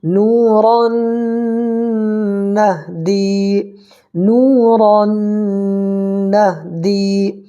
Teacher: واو ساکن سے پہلے پیش ہو تو واو مدہ ہوگا، اس کو 1 الف برابر کھینچ کر کے پڑھیں گے، اور 1 الف کی مقدار یعنی 1 سیکنڈ اس کو کھینچنا ہے۔